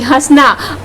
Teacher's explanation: वायु जो है वो नाक और मुंह दोनों से ही बाहर निकल रही है